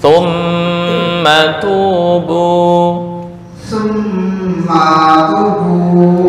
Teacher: mim yang bertasydid itu gunnah, ditahan dulu.